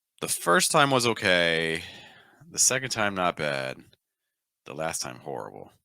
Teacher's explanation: We're lowering the pitch each time.